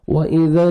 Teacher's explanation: وَإِذَا واو لین ہے، واو جزم سے پہلے زبر ہے، آپ نے نرمی سے ادا کرنا ہے اور لپس کو راؤنڈ میں لے کے جانا ہے تاکہ اچھی طرح واو ادا ہو۔ وَإِذَا حمزہ کے اوپر الٹا پیش ہے، واو مدہ کے قائم مقام ہے، آپ نے 1 سیکنڈ اس کو ایک الف کے برابر کھینچنا ہے۔